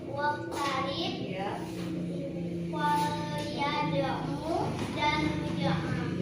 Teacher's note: Cara membacanya yaitu dipantulkan dengan ringan atau tipis. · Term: qalqalah subra